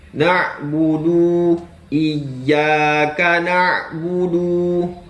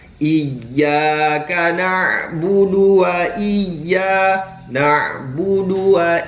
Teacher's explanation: Jadi huruf du itu adalah pendek, tidaklah panjang ya. Jadi harus dibaca agak lebih cepat.